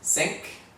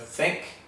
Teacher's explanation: the TH becomes an S. So it's not something with the tongue between your teeth